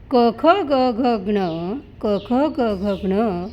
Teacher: क ख ग घ ज्ञ यांना कंठव्य म्हणतात, कारण यांचा उच्चार करताना ध्वनी कंठातून निघतो.